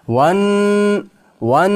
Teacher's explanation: nun harfni ushlaymiz. G'unna bor.